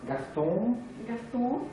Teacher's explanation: on nasalise au maximum pour obtenir la voyelle nasalisée